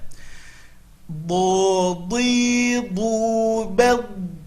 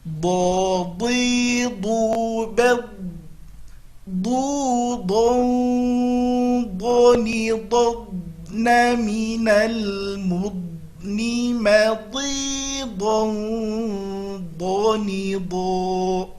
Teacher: Okey, huruf berikutnya huruf do. Huruf do makhrajnya adalah tepi lidah ke gigi geraham atas.